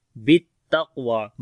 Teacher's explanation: با کو تا کے ساتھ تھوڑا سخت کر کے پڑھیں گے کیونکہ تا کے اوپر شد ہے، تو شد والا حرف جو ہوتا ہے تھوڑا جماؤ کے ساتھ پڑھا جاتا ہے، بالتقوی۔